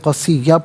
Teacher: اب یہاں پر آپ دیکھیں قصیًا، وقف کی صورت میں قصیہ پڑھیں گے، دو زبر کی تنوین وقف میں الف سے چینج ہو جاتی ہے